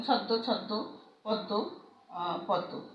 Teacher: শব্দের শেষে মফলা যুক্ত হলে সংযুক্ত ব্যঞ্জনের দ্বিত্ব উচ্চারণ হয়ে থাকে।